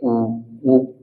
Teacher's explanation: रहे है ना तो हमारे होठों की मदद लग र है होठ गोल हो जाते हैं · ऊ ऊ ऊ बोल रहे हैं ना, तो हमारे होंठों की मदद लग रही है, होंठ गोल हो जाते हैं, ठीक है। तो इसलिए इनको वृत्ताकार भी बोलते हैं, वृत्ताकार स्वर, मैंने पीछे वीडियो में स्वर वाले वीडियो में आपको इनके बारे में बताया होगा, ठीक है।